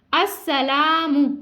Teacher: الف سے پہلے حرف پر زبر الف مدہ ہے یعنی لام جو ہے الف مدہ ہے ہم اس لیے اس کو کھینچ کے ادا کر رہے ہیں.